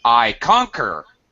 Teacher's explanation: what happens if I stress the first syllable think about this I conquer I'm saying a totally different word